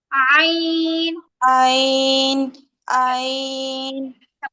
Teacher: গলার মাঝখান বরাবর মানে যেই জায়গা থেকে হা উচ্চারণ হয় ঠিক ওই জায়গা থেকেই আইন উচ্চারণ হয় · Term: গলার আইন